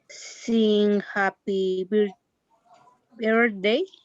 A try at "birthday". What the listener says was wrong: Birthday. birthday. Birth. birth. You have a th sound. Birthday. th sound. Birthday. Birthday. Birthday.